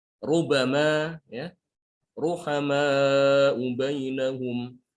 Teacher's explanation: Ini rohnya harus dibaca tebal.